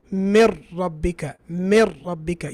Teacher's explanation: You say mir rabbika, mir rabbika. You didn't pronounce the noon. The noon has gone missing. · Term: idgham